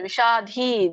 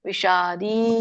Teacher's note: ವಿಷಾದಿ ದೊಡ್ಡ ದ ಇಲ್ಲ ಅಲ್ಲಿ ಮಹಾಪ್ರಾಣ ಇಲ್ಲ